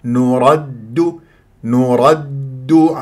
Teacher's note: هذه الدال شديده المجهوره ايضا من غير ان تخرج فيها نفس